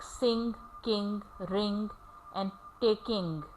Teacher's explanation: It does not have g sound after ing, because g is never pronounced after ing in the final position. · g is never pronounced in the final position after ing. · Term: ing sound